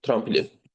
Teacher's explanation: Tramplin sözündə tramplin tələffüz zamanı bura bir dənə i saiti əlavə olunur.